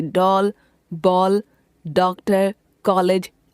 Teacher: अंग्रेजी भाषा से आए शब्दों में अ का उच्चारण हिंदी आ से भिन्न होता है। यह ओ तथा औ के मध्य का प्रतीत होता है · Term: आगत वर्ण